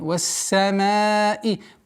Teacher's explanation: Полноценное произношение звука син со свойством свист. Вассамаи. Удлинение в размере 4 огласовок.